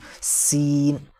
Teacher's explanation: سین کو سیٹی کی آواز نکلے گی، سخت اور باریک ہے بھی، سین، اس کو اس طرح نہیں پڑھ سکتے سین، یعنی سا ہو جائے گا، یہ سین کہیں گے۔